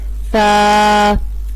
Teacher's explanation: سا کا مخرج ہے زبان کی نوک اور ثنایا علیہ کا سرا